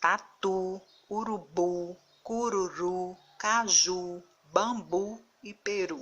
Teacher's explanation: próxima regra se escreve com u no final de palavras quanto a sílaba tônica ou seja a sílaba mais forte da palavra é a última · a última sílaba é pronunciada com mais força, com mais intensidade